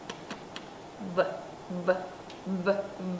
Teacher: âm này cũng dùng răng trên cắn môi dưới nhưng mà cổ rung, nó giống như âm V của tiếng Việt.